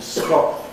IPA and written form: ˈskɒʔlənd (Scotland)